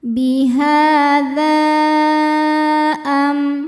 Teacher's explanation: Sedangkan hamzahnya adalah a pada kata am. Maka dzalnya panjang boleh empat, boleh lima harakat. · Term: mad, mad jaiz munfasil